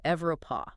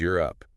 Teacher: You don't start with an E vowel sound at all. Yeah. You start with a constant glide, a Y.